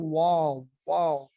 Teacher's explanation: گنچا یعنی گول، دونوں ہونٹوں کی گولائی سے ادا ہوتا ہے